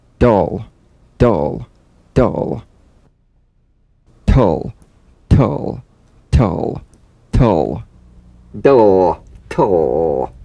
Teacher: Bounce the D or T drum bead off the gum ridge and return there immediately for the L. Feel the typical drum beat damped in the tip of the tongue as the D or T click slides quickly into the L.